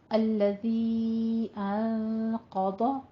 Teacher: نون ساکن کا قاعدہ اخفا آ رہا ہے, قوف کو بھی پر پڑھنا ہے اور ضاد کو بھی پر پڑھنا ہے. الذی انقض ظہرک وا کو آپ نے سیٹی کی آواز بالکل نہیں لانی ہے, نرمی کے ساتھ پڑھنا ہے پر پر پڑھنا ہے.